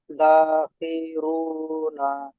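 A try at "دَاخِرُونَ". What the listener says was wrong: এই হারাঘাত গুলো একদম টান দেবেন না। ঠিক আছে, হালকা টান হয়ে আছে, হালকা পরিমাণ টান হয়ে আছে, টান দেবেন না। দাখিরুনা, দাখিরুনা।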